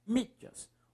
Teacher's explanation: Professor, é o mi. Mi é a sílaba mais forte.